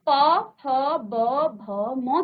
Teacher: उच्चारण कहां से हो रहा है आपके होठों से हो रहा है